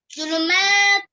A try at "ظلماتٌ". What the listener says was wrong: ज़ुलुमातु। ताऊ किधर आ गया? तू है, दाव दो पेश है ना।